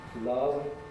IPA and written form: lʌv (Love)